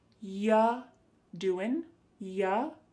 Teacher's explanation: When we say you doing anything fun instead, you're going to hear y doing ya. The word you is reduced to y.